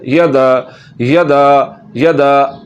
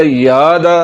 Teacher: तो जहाँ पर भी किसी भी हरफ पर ज़बर हो उस हरफ को लंबा नहीं किया जाता। तो यहाँ पर या के ऊपर ज़बर है, या को लंबा नहीं करना।